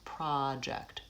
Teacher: the first syllable is lengthened and there's a pure vowel ah